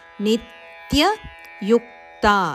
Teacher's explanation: ನೀಯ ಮೇಲೆ ಆಘಾತ ಇದೆ ಹಾಗೂ ಯುವಿನ ಮೇಲೆ ಆಘಾತ ಇದೆ